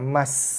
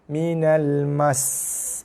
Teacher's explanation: Si bila wakaf, sin dibaca dengan baris mati, tak bunyi si lagi. Tapi sebab ada sabdu, so kita bunyikan sin tu panjang. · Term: sin sabdu